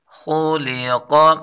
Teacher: خا کو پر پڑھیں گے، لام کو باریک پڑھیں گے اور قاف کو پر پڑھیں گے